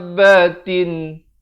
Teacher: Da itu dipanjangkan 6 harakat. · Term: mak lazim kalimi musakhkhal